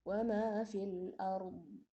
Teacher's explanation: يعني الضاد فيها صفة استطالة